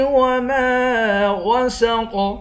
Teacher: میم کے بعد الف ہے، الف حروف مدہ ہے، اس کو ایک الف کی مقدار کھینچیں گے۔